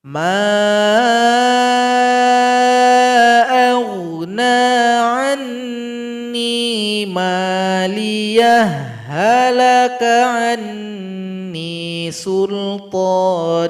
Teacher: ha sukun bertemu dengan ha, terjadilah idgham mutamathilain, pertemuan 2 huruf yang mirip. Maka tambahkan tasydid pada huruf ha ayat 29.